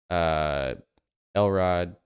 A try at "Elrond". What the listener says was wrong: Elrond. With an N.